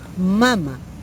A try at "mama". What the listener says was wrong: O sea, sin acento. Le quitamos el acento, es mama.